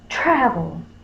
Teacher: tra is going to have the accent or the stress this is UN accented it can be right representing the schwas · So tra is going to have the accent or the stress.